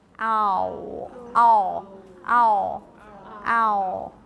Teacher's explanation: you start with the A and then you do ooh and then you do the dark L · actually I feel that my my o is kind of merged with my dark L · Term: diphthong ow